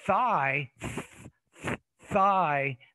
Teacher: there's no vibration it's more the theta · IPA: [ ɵ ]